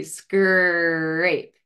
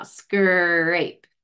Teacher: You're going to see a real labial, retracted R, like a big smile